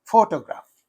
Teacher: as in this photograph, the stress is used on the first syllable.